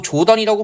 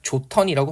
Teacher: 축약되고 있고요 이거 조던이라고 발음하지 않죠 뭐 농구 합니까 조턴이라고 발음하고 히와 디귿 그죠 축약해서 티 이렇게 발음하고